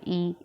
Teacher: जिन स्वरों के उच्चारण में मुख सबसे कम खुलता है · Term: संवृत स्वर